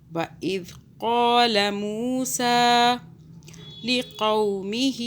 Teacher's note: दाल को सॉफ्ट पढ़ना है, क़ाफ को मोटा पढ़ना है